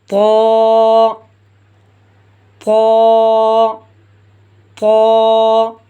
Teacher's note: زبان کی نوک کو ہم نے اوپر کے دانتوں کی جڑوں میں تھوڑا سا زور دے کے ادا کرنا ہے۔ زبان کی نوک کو اوپر کے دانتوں کی جڑوں سے ہم نے ان حروفوں کو ادا کرنا ہے۔